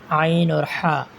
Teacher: اب رہ گیا حلق کا درمیانی حصہ، اس سے بھی 2 حروف ادا ہوں گے: عین اور حا۔